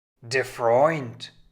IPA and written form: deːɐ̯ ˈfʀɔʏnt (der Freund)